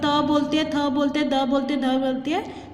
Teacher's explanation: तो हमारी जो टंग है वो दांतों के साथ टच होती है